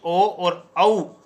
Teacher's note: ओदतो कंठोष्टम यानी ओ और औ वर्ण का उच्चारण स्थान है वो कंठोष्ट होगा